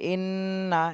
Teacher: ইন্না এখানে ওয়াজিব গুন্না করতে হবে, হরকতের বামে নুনে তাসদিদ, ওয়াজিব গুন্না ইন।